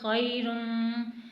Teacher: اب یہاں پر میم مشدد ہے اور رو کے اوپر تنوین ہے تو یہاں پہ ہم گنہ کر کے پڑھیں گے